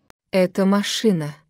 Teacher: la voz sube bruscamente sobre las sílabas acentuada de la palabra que implica la pregunta En las sílabas posteriores el tono desciende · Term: entonación del Tercer tipo